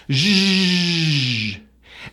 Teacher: So it's shh, add voicing, zh. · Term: voiced SH sound